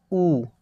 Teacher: ऊ का उच्चारण करते समय देखो भाई हमारा जो होंठ है ये वृत्त के आकार का गोल हो रहा है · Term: वृत्तमुखी स्वर